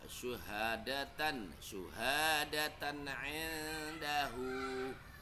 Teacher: Tannya itu harus jelas ya. Tannya harus jelas dan pendek, tidak boleh ditahan, tidak boleh didengungkan.